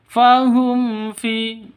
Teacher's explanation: Fahum fi, mim mati bertemu dengan fa. Jelas, terang karena izhar safawi. Izhar safawi jelas.